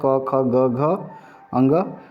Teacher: वर्ग क से अंग तक यह कंठस्थ कंठ व्यंजन कहलाते हैं यह कंठ की सहायता से इनका उच्चारण होता है